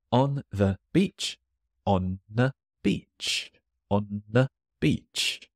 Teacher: This is a case of the disappearing the. It's really hard to catch.